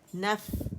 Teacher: فا کا ہمس اور رخاوہ اس کو فیل کرے